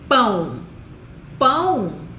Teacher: É o som de U. E esse O, que vai funcionar como U, é mais fraquinho, é uma semivogal. Ele não pode ficar sozinho numa sílaba. · A gente escreve com O, mas o som que a gente ouve, que a gente pronuncia, né? É o som de U. E esse O, que vai funcionar como U, é mais fraquinho, é uma semivogal.